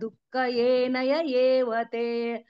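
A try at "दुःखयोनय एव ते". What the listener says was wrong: ఏ కాదు మాతాజీ, అక్కడ యో.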